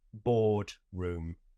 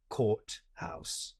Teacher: British accents are described as non-rhotic because we don't say an R after a vowel and before another consonant. So I say boardroom, and I say courthouse.